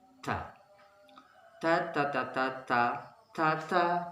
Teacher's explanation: kemudian huruf-huruf lidah menempel di gusi atas